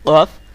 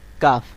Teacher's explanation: একেবারে গোড়া না গোড়া দিয়ে আপনি উচ্চারণ করবেন অফ আর তার একটুখানি সামনে দিয়ে উচ্চারণ করবেন কাফ